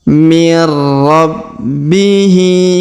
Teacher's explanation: Kemudian huruf B kita tahan dan kita tekan karena terdapat tanda tasdid.